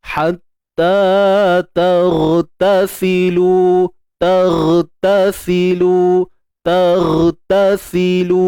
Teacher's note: Untuk huruf ghain kita matikan dia dengan mengangkat pangkal lidah tanpa perlu memuncungkan bibir.